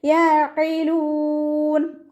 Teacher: കാഫിൻ്റെ സൗണ്ടായി പോകരുത്. യഖിലൂൻ, ഖാഫിൻ്റെ മഖ്റജ് വരുന്നത് നമ്മുടെ നാവിൻ്റെ അവസാന ഭാഗമാണ്, അക്സൽ ലിസാൻ, നാവ് അവസാനിക്കുന്ന ഭാഗത്തു നിന്നാണ് ഖാഫ് പുറപ്പെടുന്നത്. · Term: ഖാഫിൻ്റെ സൗണ്ടിനെ